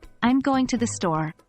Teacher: speaking for example consider the sentence I'm going to the store you'd start with a higher pitch on I'm and gradually lower your pitch so by the time you reach store your voice is lower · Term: intonation usually Falls